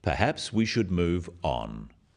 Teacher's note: This falling intonation makes it a more definite statement rather than a suggestion. · The first one, "perhaps we should move on," is phrased as a suggestion, but it is said in a firm way with a falling intonation at the end.